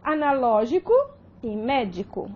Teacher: a prosódica, né, da proparoxítona é a antepenúltima sílaba